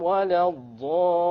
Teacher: غَيْرِ الْمَغْضُوبِ عَلَيْهِمْ وَلَا الضَّالِّينَ. Once again, the ضَالِّينَ, this is a mad lazim kalimi. You have to prolong it to 6.